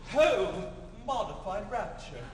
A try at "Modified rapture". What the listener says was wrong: But don't say the O. Just leave it modified rapture.